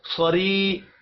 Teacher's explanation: یا مدہ ایک الف کے برابر کھینچ کر پڑھا جائے گا۔